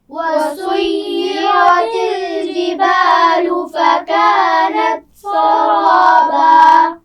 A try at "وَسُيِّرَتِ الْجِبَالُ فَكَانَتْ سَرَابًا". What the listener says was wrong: سین کو باریک پڑھنا ہے. وَسُيِّرَتِ الْجِبَالُ جیم کا مخرج واضح کیجئے. دوبارہ پڑھیے.